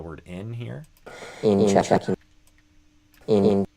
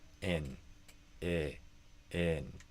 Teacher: instead of ing, which is kind of like sing without the S, aim for in